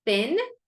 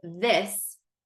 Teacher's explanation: the word thin or like a thin pencil or with that has that unvoiced sound whereas the word this is voiced